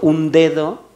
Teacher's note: Incluso dentro de dedo, un dedo, D, la primera es oclusiva y la segunda no.